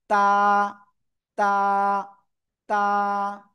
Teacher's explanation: জিহ্বার আগা উপরের দুই দাঁতের গোড়ায় লাগান লাগান লাগান লাগান লাগিয়ে জাস্ট এক আলিফটা নিয়ে উচ্চারণ করব তা